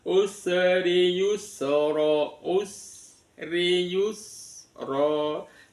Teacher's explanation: Yang penting di sinnya itu yang sering kesalahan, usri yusra, usri yusra. Sinnya tetap mengalir, ada suara desisan.